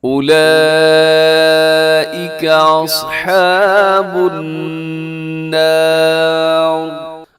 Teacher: اصحاب النار الصاد موٹا ہے اور النار یہاں پر نون مشدد کی وجہ سے غنہ ہے، اور آخر میں جو را لکھی ہوئی ہے را موٹی پڑی جائے گی